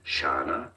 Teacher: with a schwa sound on the second A